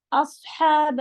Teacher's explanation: ہا پہ حلق سے پڑھا جائے گا